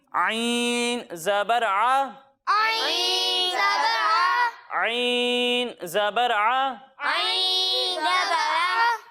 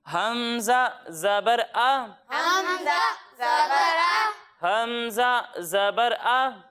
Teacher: जब हम आइन की अदायगी करेंगे तो इसे हलक के दरमियाने हिस्से से पढ़ेंगे, लेकिन जब हम हमज़ा की अदायगी करेंगे तो इसे हलक के निचले हिस्से से पढ़ेंगे